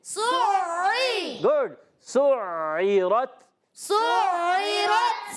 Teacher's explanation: سُعِّرَتْ سین سیٹی کے ساتھ ادا ہوگا, عین کی ادائیگی الگ کے درمیان والے حصے سے. عین پہ تھوڑا زور بھی دینا ہے, کیوں؟ کیونکہ عین مشدد ہے